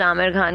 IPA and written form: ˈaːmɪr xaːn (Aamir Khan)